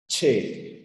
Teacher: se produce mediante una oclusión y mediante una aplicación o sea con la africada primero hay un cierre completo y luego el aire sale de manera continua y la única africada es la che fíjate primero se cierra